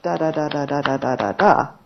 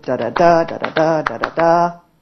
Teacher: in Thai are not multi cabic words in Thai are monosyllabic each word in the utterance receives equal emphasis unlike English right much more staccato